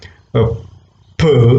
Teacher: So plosives are those sounds in the production of which what really happens is the air is completely blocked and then it is suddenly released. There is an explosion, something like that.